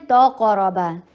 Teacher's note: ता को हैवी नहीं करना, ता कभी ज़िंदगी में हैवी नहीं होता, कॉफ और रॉ हैवी हो रहे हैं